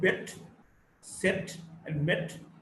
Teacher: Now we've got the sound A, the front between half close and half open, unrounded short vowel